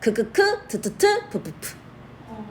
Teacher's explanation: 공기의 흐름을 막았다가 터트리는 파열음